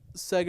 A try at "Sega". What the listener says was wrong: You said Sega with an R. It's not how you pronounce it, but anyway, keep going.